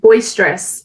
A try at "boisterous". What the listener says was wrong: Boisterous. I think you said boy stress, as in boys stress. Boisterous.